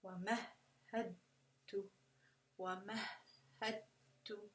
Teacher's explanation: It's almost like the dal is disappearing in the merge. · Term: idgham kamil